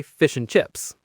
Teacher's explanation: If you say it slowly, you hear the D in ant, but usually we say fish and chips. That D sound is completely gone. It just vanishes into thin air. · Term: elision